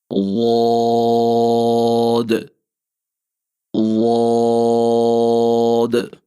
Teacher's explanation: اس کے بعد ہمارا اگلا حرف ضاد، زبان کے پچھلے حصے کو تالو کی طرف بلند کرتے ہوئے اور زبان کا جو موٹا کنارہ ہے، جو بائیں سائڈ پہ آپ کا موٹا کنارہ ہے، اس کو آپ اوپر والی داڑھوں کی جڑ کے ساتھ لگائیں گے اور آہستہ آہستہ نرمی سے لگا کر خوب دراز آواز میں اس کو ادا کریں گے، ضاد ضاد۔